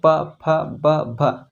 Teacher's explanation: प वर्ग का उच्चारण ओष्ठ से होता है। ओष्ठ मतलब होठ, ये जो होठ है ना, यहाँ से उच्चारण होता है।